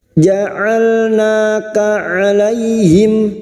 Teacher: huruf lam sukun, hati-hati memantul ya, jangan dipantulkan